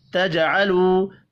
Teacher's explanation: جیم ساکن پر قلقلہ کرنا ہے، واو مدہ کو 1 الف کے برابر کھینچ کر پڑھیں گے۔